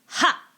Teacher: So it's almost like a very strong ha sound, like somebody's punching you in the gut at the same time. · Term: vocal fold adduction